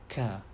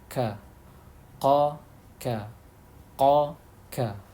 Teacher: pangkal lidah bagian tengah dan langit-langit mulut bagian tengah, agak maju sedikit, ka, disertai dengan desis sedikit, ka. Kemudian itu yang pangkal lidah.